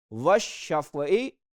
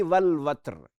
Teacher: जहां पे लाम नहीं पढ़ा जा रहा वशफ़े में वो शमसी है, और जहां लाम पढ़ा जा रहा है वल वत्रे वो कमरी है